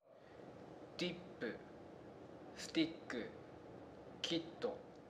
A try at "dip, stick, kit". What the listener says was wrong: As you can see, his mouth was not stretched wide enough to produce the sound. And the second one, he was prolonging the sound.